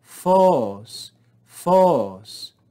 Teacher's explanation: Circumflex accent on the omega, rise and fall.